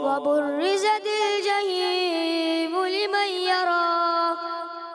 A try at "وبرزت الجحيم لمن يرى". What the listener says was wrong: آپ بیٹا جحیم کو زیادہ کھینچ دیتے ہو، مدہ کو زیادہ نہیں کھینچنا. ایک الف اور لمن یرا جہاں پر ادغام کا غنہ ہونا ہے اس کو چھوڑ دیتے، اور آپ کی توجہ میری طرف نہیں ہوتی. وَبُرِّزَتِ الْجَحِيمُ لِمَن يَرَى.